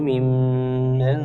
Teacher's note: Mim tasdid hukumnya gunah didengungkan dua harakat